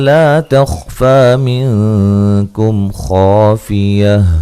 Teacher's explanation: خا کو موٹا اور خا کو ہلانا نہیں ہے